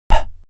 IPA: p